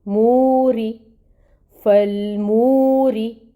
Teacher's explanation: را کو اب ہم نے باریک بھی پڑھنا ہے، کیونکہ زیر جب آتی ہے را کے نیچے تو پھر اس کو باریک پڑھا جاتا ہے۔ · یا کے اوپر کھڑی مد ہے، 2 کاؤنٹس لمبا پڑھیں گے۔